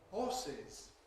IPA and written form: ˈhɔːsɪz (horses)